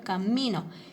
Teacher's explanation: me doy cuenta cierto que el acento está en la sílaba mi